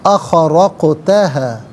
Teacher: قال اخرقتها، اخرقتها، را پر زبر ہے، را کو پر کر کے پڑھا جائے گا، اور قاف ساکن ہے، حرف قلقلہ ہے، اور یہاں پر ادائیگی کے وقت ناظرین آواز لوٹتی ہوئی محسوس ہونی چاہیے